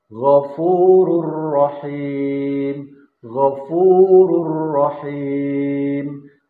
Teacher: tidak dibaca ghafurun rahim, tapi ghafurur rahim yang melebur ke dalam huruf ro.